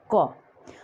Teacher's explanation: क बोलते समय हमारा कंठ के पास जो है वहाँ से आवाज़ आती है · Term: स्पर्श व्यंजन